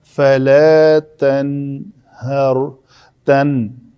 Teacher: نوک لسان اوپر والے دانتوں کے پیچھے آ کے لگتی ہے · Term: نون